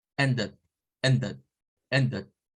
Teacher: Sonaría para nosotros, parece una U, pero es el schwa. Recuerden que el schwa agarra el sonido dependiendo de la vocal que esté sustituyendo a veces.